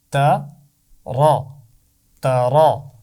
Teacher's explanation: آپ کو پتہ ہے نا، زبر کے ساتھ ہم نے اس کی آواز سیکھی تھی. زبر کے ساتھ را کی آواز موٹی ہوتی ہے، تو را کو موٹا پڑھنا ہے